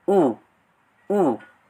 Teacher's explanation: posisi rahang tertutup dan posisi lidah di belakang